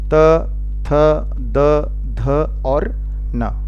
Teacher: ये सभी उच्चारित होते हैं दंत से